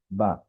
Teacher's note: আমরা বার ক্ষেত্রে বলেছিলাম যে বাটা উচ্চারণ হয় দুই ঠোঁটের ভিজা জায়গা থেকে